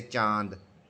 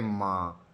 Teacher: उच्चारण करते समय हम नाक और मुख से समान दबाव के साथ बाहर निकालते हैं। · अनुनासिक में नाक और मुख दोनों से जो हवा है वो बाहर निकलती है।